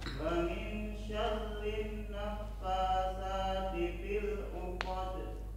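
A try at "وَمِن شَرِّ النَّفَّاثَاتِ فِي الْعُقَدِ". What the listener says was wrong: Dengungnya wa min syarrin naffatsat.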